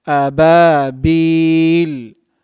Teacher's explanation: 4 harakat long because we're stopping there